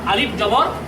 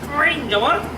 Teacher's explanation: আলিফ উচ্চারিত হচ্ছে এটা শূন্যস্থান থেকে মুখের শূন্যস্থান থেকে আলিফ আর আইন উচ্চারিত হচ্ছে এটি কন্ঠের মাঝখান থেকে এবং উচ্চারণ করার সময় কন্ঠটাকে একটু চিপা ধরতে হবে যেমন আইন জবর আর আলিফ জবর আলিফ জবর আইন জবর তাহলে বুঝতে পারছেন যে আমরা এই দুটি অক্ষরের মধ্যে পার্থক্যটা সুস্পষ্ট রূপে বুঝতে পারলাম।